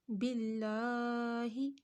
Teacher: یہاں پہ لفظ اللہ سے پہلے زیر آ رہا ہے، تو لفظ اللہ کو ہم نے پتلا پڑھا